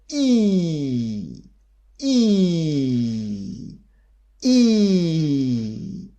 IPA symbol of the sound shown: iː